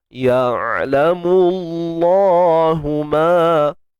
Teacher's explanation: Huruf ain kita sempitkan tengah kerongkong.